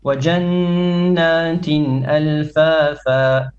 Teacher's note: A little bit longer on the غنة.